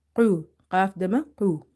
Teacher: Then, qaf is pronounced. Qaf, it's heavy. And some of the voice is falling in the throat. So, it's more towards the throat.